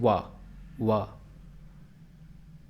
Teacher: व जो है दांत और ओष्ठ से दोनों से बोला जाता है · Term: दंतोष्ठ